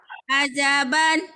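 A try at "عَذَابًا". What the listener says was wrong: Salah. Azaban. Zanya panjang. Azaban. Azaban.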